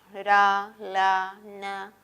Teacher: la punta de la lengua toca esta zona llamada la zona de los alveolos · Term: fonemas alveolares